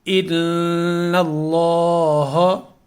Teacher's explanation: یہ بھی لام مشدد ہے یہاں پہ، لیکن اس میں کوئی غنہ نہیں ہوگا، نہ اس کو ہم نے کوئی ایک یا دو حرکت کے مقدار کے برابر اس کو ہم نے کھینچنا، غنہ کرنا، صرف غنہ یہ ہوگا ان، چونکہ یہ نون مشدد ہے.